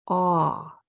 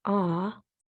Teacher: If you want to level up your knowledge and know more than most people about AU and AW, it's technically a deeper sound than just a short O. Your jaw is dropped even more with an AW and an AU.